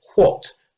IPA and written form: ʍɒt (what)